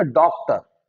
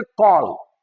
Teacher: ना ही ओ है पूरी तरह से, थोड़ा आ भी है और थोड़ा ओ भी है, दोनों का मिक्सचर है, तो वही है औ। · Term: आगत स्वर